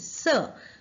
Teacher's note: हमारे टीथ को हमारी टंग छूती है, टीथ के नीचे जो जड़ें होती है उसमें